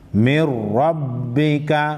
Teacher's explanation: نون ساکن کے بعد حروف یرملون میں سے را ہے ادغام ہوگا صرف ادغام ہوگا غنہ نہیں ہوگا